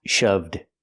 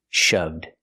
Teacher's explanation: the other boy shove in the present in the past shoved use the D sound and Link The Sounds